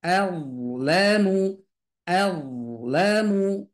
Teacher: A tipis D tebal la tipis mu tipis